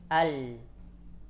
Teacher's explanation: Rikhun fi hafatay lisan. Huruf lam itu di ujung lidah syadid, tidak ngalir suaranya, tertahan. Tapi di tepinya mengalir. Al. Jadi syadid di ujung, rikhwah fi hafah.